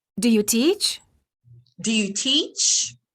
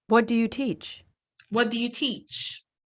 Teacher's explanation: The first question of the pair has rising intonation, and the second has falling intonation.